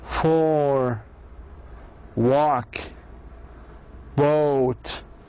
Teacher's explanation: the tongue is back and it's low at the same time